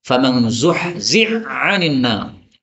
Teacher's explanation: hak ketemu dengan ain bisa dibaca idgham ya. Maka haknya diganti ain.